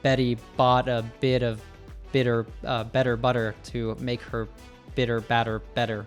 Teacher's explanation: They're called American tees or tap te's which sounds more like a duh. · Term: tap T's